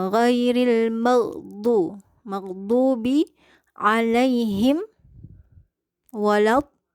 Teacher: Jadi istitolah itu dia menempel di sisi lidahnya menempel di gigi geraham bagian atas ya, bukan seperti do. Kalau do itu pakai ujung lidah, tapi kita di sini pakai sisi lidah ya.